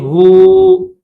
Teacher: یہاں پر اسٹاپ کریں گے، واو کے اوپر زبر ہے لیکن جب اسٹاپ کریں گے تو اس کو ہوا نہیں پڑھیں گے، واو کے اوپر زبر نہیں پڑھیں گے